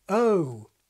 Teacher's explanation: by 1962 Gimson felt the mainstream RP pronunciation began with a central, more schwa-like quality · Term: GOAT diphthong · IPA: əʊ